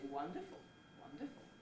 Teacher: you can just simply have nucleus and tail and there will be no prehead either there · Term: low rise nucleus